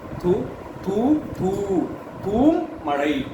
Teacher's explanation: நமக்கு நெடில் எழுத்துக்கு ரெண்டு மாத்திரை ஆனா இந்த இடத்துல மூணு மாத்திரையாக ஒலிக்கும் அதை அடையாளப்படுத்துறதுக்காக கூட ஒரு குறில் எழுத்தை சேர்த்து எழுதுவாங்க அதற்கு பேரு அளவடை